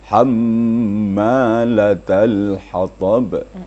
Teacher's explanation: Mim musyaddada itu namanya wajibul gunnah, wajib berdengung. Ada ditahan suara ya. Kira-kira dua ketukan atau dua harakat.